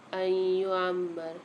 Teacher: یہاں پر نون ساکن کے بعد ادغام مع غنہ کا قاعدہ ہو رہا ہے، یعنی یہاں پر ہم غنہ کے ساتھ ادغام کر کے پڑھیں گے۔